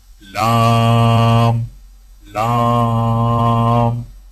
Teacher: لام کی ادائیگی میں زبان کے باریک کنارے کو اوپر والے دانتوں کے مسوڑوں سے لگا کر باریک آواز میں پڑھیں، یعنی لام لام۔